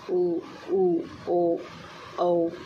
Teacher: जिन स्वरों के उच्चारण में होठ व्रतमुखी या गोलाकार होते हैं, व्रतमुखी स्वर कहलाते हैं